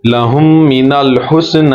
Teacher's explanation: ایک میم دوسرے میم میں ضم ہو جائے گا، اور غنہ کریں گے، ناک سے آواز نکالیں گے۔ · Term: इदगाम शफवी